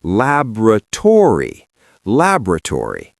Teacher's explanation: In America, we shift the stress all the way to the front. We stress the first syllable, lab, and we do not drop the vowels at the end, but we do change them. We say laboratory.